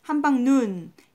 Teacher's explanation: 원래 한방눈이 긴 소리였는데 한방눈 해서 짧게 발음이 되는구나